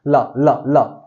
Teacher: जब ला बोलो तो आपकी जीभ किस पे टच हो रही है बेटा, दांत पे टच हो रही है